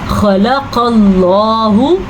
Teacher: खलक़ल्लाहु ये इसलिए पुर पढ़ेंगे मोटा करके क्योंकि क़ाफ और खा किस में शामिल है, हरूफ मुस्तालिया में, वो हरूफ जो पुर पढ़े जाते हैं। और अल्लाह का नाम इसलिए पुर पढ़ेंगे क्योंकि अल्लाह के नाम से पहले ज़बर आई है, तो इसलिए अल्लाह का नाम पुर पढ़ेंगे।